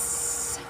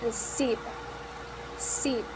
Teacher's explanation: Then we have the phoneme s, s, which is voiceless, lingual-alveolar, fricative